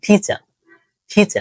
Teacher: British ফ্রান্সিয়েশন সেক্ষেত্রে আর উচ্চারণ করবে না যেমন ধরো টিচার টিচার লাস্টে আর উচ্চারণ করতেছি না কম্পিউটার নট কম্পিউটার অর্থাৎ লাস্টের আর উচ্চারণটা তারা করে · দেখো আর এর উচ্চারণের ক্ষেত্রে তুমি যদি ব্রিটিশটাকে ফলো করে থাকো, ব্রিটিশ প্রনাউন্সিয়েশন, সেক্ষেত্রে আর এর উচ্চারণ করবে না।